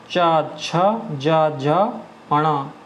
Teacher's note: अगला है तालव्य व्यंजन, जिनको बोलने में जीभ का आगे वाला भाग तालु को स्पर्श करता है उनको तालव्य बोलते हैं